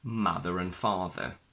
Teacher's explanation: the r in father is silent because it's not followed by a vowel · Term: silent R